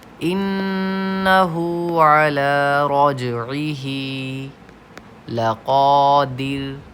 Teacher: در پہ قلقلہ نہیں ہونا چاہیے